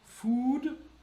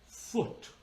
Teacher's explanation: U as in food, which is closed. Open, as in foot. So closed, food, open, foot.